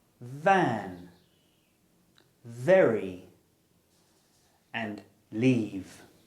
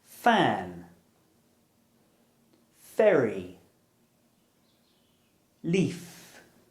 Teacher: So to make this sound correctly, your bottom lip needs to touch your upper teeth. The v is voiced and the f is aspirated.